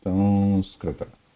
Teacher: when we say Sanskrita, we are not touching the lips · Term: anuswara